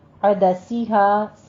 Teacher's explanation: وعدسیہا میں عین وسط حلق سے نکالی اور سین شارپ رکھیے گا آواز کو